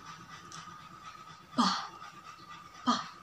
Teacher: And then is p sound, p, p. So it not use a vocal cord, just airflow, so voiceless. Just make our upper lips and lower lips blocking together. So p, p, p sound.